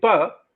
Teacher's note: the lower lip comes in contact with the upper lip the air stream is stopped and then the pressure is allowed to build up behind the